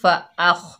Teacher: हमज़ा के ऊपर ज़बर है, आगे खौ साकिन है, हमज़ा को खौ से मिलाकर पढ़ेंगे फ़अख़। खौ की आवाज़ जो है वो खुरदरी होती है। फ़अख़, खौ रुफ़े मुस्तआला में से है, मोटा हरूफ है तो मोटा पढ़ा जाएगा।